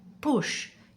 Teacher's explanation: Lips together, no voice, just breath.